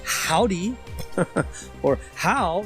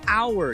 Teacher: You swallow that H sound. There's no H sound, right?